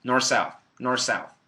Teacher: So some people just completely delete the TH